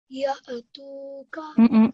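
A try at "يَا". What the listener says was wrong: You made that ya sound again. That's wrong. Ya tuka. So this is something that you might want to focus on, that you don't make that ya sound, okay?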